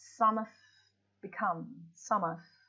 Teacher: Have is pronounced like the preposition of. It is joined closely with the preceding word.